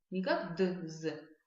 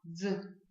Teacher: Для того, чтобы его правильно произнести, нужно попробовать произнести вместе одновременно звук д и з как один звук. Не как д, з, а вот попробуйте, представьте, что это один звук. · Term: звук дз